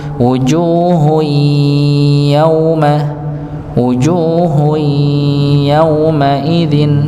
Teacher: dibaca idgham bi ghunnah, masuk dengan dengung, maka ditahan terlebih dahulu